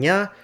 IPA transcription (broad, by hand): ɲ